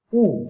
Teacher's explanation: উ উচ্চারণ করতে গেলে জিভের পিছনের দিকটা ফুলে উঠে একটু উচ্চ অবস্থানে থাকে। ওই অবস্থানে রেখে ও উচ্চারণ করে দেখো, দেখবে একটু নেমে যাবে। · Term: পশ্চাৎ